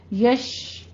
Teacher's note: یہ شین کی آواز پہ آپ نے تفشی کرنی ہے